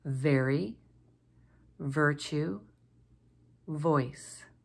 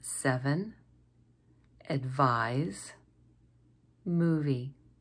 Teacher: make first the letter V we form the the sound by placing our top front two teeth against our lower lip and then using our voice to blow out over our lip